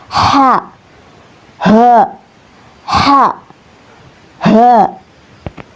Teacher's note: huruf ha ini ya keluar dari pangkal tenggorokan atau aksal halq